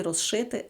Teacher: у слові розшити з свистячий ш шиплячий і з уподібнюється ш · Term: уподібнюються